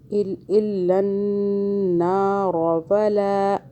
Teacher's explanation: نون پہ مشدد پہ گنہ ہوا، را کو موٹا پڑا